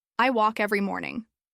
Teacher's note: This one is extra tricky because it's not just about vowels. Walk has a silent L and the vowel sound is like the one in law.